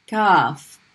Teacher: the english k is when you have the middle of the tongue the midpoint of the tongue hits the roof of the mouth towards the back